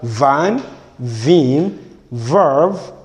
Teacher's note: it is described as the voiced labiodental fricative. That is, it is a counterpart of F. So this is V, that means it is stressed labiodental fricative.